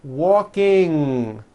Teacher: the ng sound comes out of your nose it's a combination of an N and a G